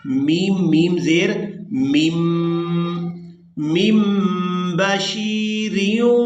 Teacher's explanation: اقلاب کرنے کی وجہ یہ ہے کہ نون ساکن کے فوراً بعد با آ گئی ہے، تو اب یہاں پر ہم نے نون کی آواز کو میم کے ساتھ بدل کر ادا کرنا ہے